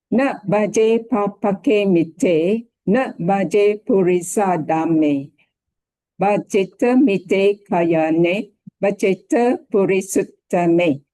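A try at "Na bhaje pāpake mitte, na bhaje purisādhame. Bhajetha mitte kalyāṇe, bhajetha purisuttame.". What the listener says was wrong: Okay, great.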